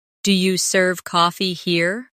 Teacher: In casual speech, do you becomes dia.